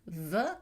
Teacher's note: la labiodentale, V, qui est une fricative, on peut continuer à prononcer ce son V